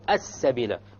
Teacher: Solar lam. It's a solar letter, therefore the lam will be dropped.